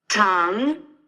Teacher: remember to push the air through and to really do this Rising intonation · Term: second tone